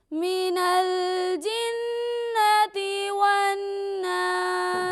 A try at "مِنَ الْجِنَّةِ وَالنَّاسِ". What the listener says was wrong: غنہ دونوں جگہ غنہ کرنا ہے. من الجنة والناس.